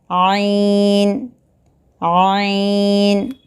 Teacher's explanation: حلق کے درمیانی حصے سے عین نکلتا ہے